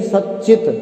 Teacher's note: ऐसे ही सच्चित, यहाँ संधि विच्छेद होगा सत धन चित, तो यहाँ जो सत का तकार है वह च के योग के कारण से चकार में ही बदल गया और संधि हो गई ष्टुत्व संधि।